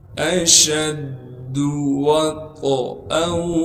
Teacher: طا کو موٹا کر کے پڑھیں گے اور طا میں قلقلہ کریں گے، یعنی آواز کو ہلائیں گے۔ حمزہ کو ہم نے آگے واو سے ملانا ہے غنہ کے ساتھ۔